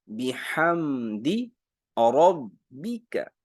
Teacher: بحمدی ربک، بی کا زیر باریک